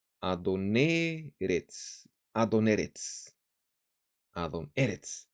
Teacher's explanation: Mira, la entonación de Adón estaba en la segunda sílaba, on. Ahora el acento se ha ido a la segunda palabra y en la primera sílaba de la segunda palabra se lee así, Adoneretz, Adoneretz.